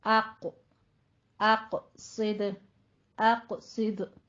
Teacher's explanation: और ये पहले से मुंह नहीं भर लेना, ठीक है। आ की आवाज साउंड बारीक रहेगा। आगे कौफ को आपने पुर करना है।